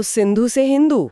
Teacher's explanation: उनकी भाषा की ना एक खास ध्वन्यात्मक प्रकृति थी। वे स ध्वनि का उच्चारण नहीं कर पाते थे। उसकी जगह वे ह बोलते थे। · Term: उच्चारण भेद